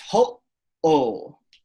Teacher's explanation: So you're stopping, you're literally having a glottal stop.